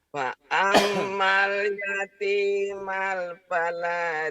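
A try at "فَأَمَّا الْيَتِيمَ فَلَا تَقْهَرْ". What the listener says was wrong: Jangan ada malnya, jangan ada malnya. Jangan ada malnya nih. Fa ammal yatima pala, yatima pala, yatima fala takar.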